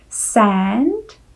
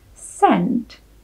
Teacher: První slovíčko bude obsahovat tu americkou samohlásku e, zatímco to druhé bude obsahovat to typické české e.